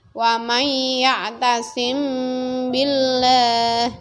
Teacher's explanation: Bacaan ikhfa safawi. Caranya menyamarkan bacaan mim ya atau mim sukun atau mati di bibir sambil didengungkan, disamarkan mimnya. Wa may ya'tasim billah, ya, disamarkan, didengungkan di bibir.